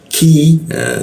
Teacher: kita turunkan sehingga ada hembusan udara ketika membaca huruf q